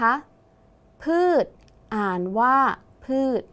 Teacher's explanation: ชช้างเป็นตัวสะกดออกเสียงพยัญชนะท้ายเหมือนดเด็ก ดังนั้นคำว่าพืชจึงอยู่ในมาตราตัวสะกดแม่กดที่ไม่ตรงตามมาตรานั่นเองค่ะคำต่อไปนะคะนักเรียนเคยดูนางสาวไทยไหมคะเวลาได้นางสาวไทยได้ที่1เนี่ยเขาจะต้องสวมมงกุฎนั่นเองค่ะมงกุฎมี2พยางค์ใช่ไหมคะครูก็จะแบ่งเป็นคำว่างงและคำว่าGoodคำว่างงก่อนนะคะพยัญชนะต้นคือมม้าและมีงงูเป็นตัวสะกดสระที่ใช้ก็คือสระโอะ